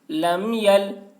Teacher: میم ساکن کے بعد با اور میم کے علاوہ حرف یا ہے، اس وجہ سے میم کو ظاہر کر کے پڑھیں گے، اس کو اظہار شفوی کہتے ہیں۔